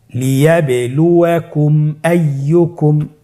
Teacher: মিম সাকিনের পরে যদি মিম এবং বা ছাড়া বাকি যতগুলো হরফ আছে আরবি সবগুলো হরফের যে কোনো একটি হরফ আসলে মিম সাকিনকে গুণনা ছাড়া স্পষ্ট করে পড়তে হবে। মিম সাকিনকে স্পষ্ট করে গুণনা ছাড়া পড়তে হবে। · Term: ইজহারে শাফাউই